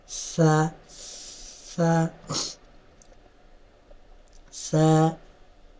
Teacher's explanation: এখানে শব্দ হবে না, হালকা বাতাস বের হবে